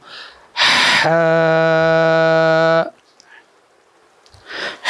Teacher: हा हल्क के दरमियान वाले हिस्से से यह अदा होता है